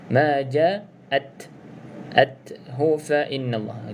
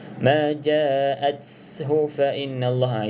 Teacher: huruf ta Yang sukun perlu ada sifat Hamas